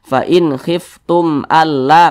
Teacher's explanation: selain daripada mim dan ba semua hukumnya namanya izhar syafawi ini mim sukun nih berjumpa dengan huruf hamzah izhar syafawi dibaca jelas tidak berdengung